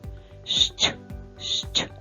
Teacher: буква ща завжди позначає два звуки шч. А промовляємо ми його так, наче щось чистимо щіточкою.